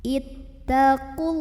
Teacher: Ada lam jalalah yang dibunyikan secara tafkhim karena huruf sebelumnya dhammah. Maka bacanya tebal, pangkal lidah dinaikkan.